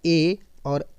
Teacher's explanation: ए और ऐ की बात करें तो यह आपका हो जाएगा कंठ तालव्य